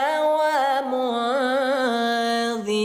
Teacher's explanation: disamarkan nun matinya dengungkan dua harakat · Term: ikhfa